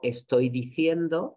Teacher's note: la D de diciendo, que hay dos Ds, una sería aproximante, la primera, y la última, que está detrás de una nasal, es oclusiva. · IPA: [ð̞] vs. [d]